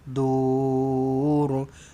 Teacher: Ra dekat belakang ni tebalkan sebab huruf sebelumnya huruf dal berbaris depan. Maka dur, tebalkan ra lah.